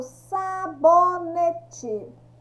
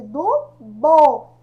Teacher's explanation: Quando eu falo sabonete, qual que é o som mais forte? Do bo.